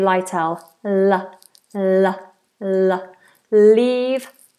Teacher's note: marked them with a downward stroke because these are light LS an L that appears at the beginning of a word is a light L almost every time I can't think of any exceptions always be a liel l